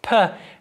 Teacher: voiceless again meaning where the vocal folds don't vibrate so the first thing that we're looking at is a voiceless bilabial plosive